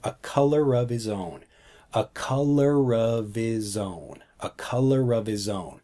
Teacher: we take the sound from color and move it over to of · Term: blending